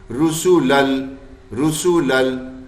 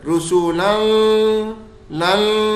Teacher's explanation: کوئی نون کی آواز یا غنے کی آواز بالکل نہیں آ رہی. رسولل رسولل یوں نہیں پڑھ رہے رسولل لل کہ غنہ بھی اس میں ڈال دیں, نہیں غنہ نہیں ڈلے گا. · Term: بغیر غننے کے